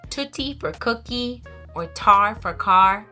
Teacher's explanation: a child is producing sounds that are produced in the back in the front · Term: fronting